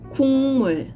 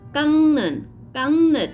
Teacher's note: 받침 그 sound changed into 응 sound before 니은 or 미음